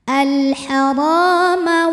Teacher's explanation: Ra matobi'i zahiri karena ada alif didahului fathah maka ra-nya panjang 2 harokat.